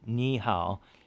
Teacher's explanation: if there's two third tones in a row the first one actually goes up to a rising second tone